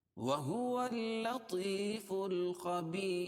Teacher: را ساکن ما قبل یا ساکن ہو تو را ہر حال میں باریک پڑھی جاتی ہے